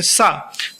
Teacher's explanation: अपने दांतों के पास जिभ्या को ले जाके बोलेंगे सा तो यह दंत स हो गया।